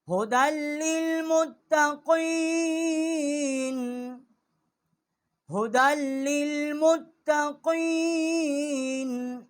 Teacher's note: ھدی ہا جو ہے بڑی ہا ہے، اقصائی حلق سے اس کا مخرج ہے۔ دال جو ہے اس کو ہم نے لام کے ساتھ مشدد کی ہے، یا جو ہے یہاں پر ساکت ہو گئی ہے، لکھنے میں ہے پڑھنے میں نہیں ہے، ھدی للمتقین۔